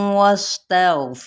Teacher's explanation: इदगाम माल गुना का कायदा, सीन पे सीटी वाज़े करेंगे, गैनपुर पढ़ा जाएगा और इसमें जलाला का लाम बारीक पढ़ा जाएगा ज़ेर की वजह से